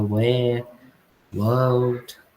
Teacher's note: Então, deu para perceber que ele não pronuncia o R nessas palavras em vermelho?